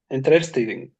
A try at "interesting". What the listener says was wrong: Ah, interesting. First of all, some students, especially the Arab students, they make the stress just on R. This is wrong. I mean, you don't have to say interesting. You have to say interesting. So notice that the stress is on N, okay? And sometimes I don't have to repeat all the or stress all the vowel letters.